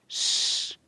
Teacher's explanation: sh, que é fricativa alveopalatal desvozeada.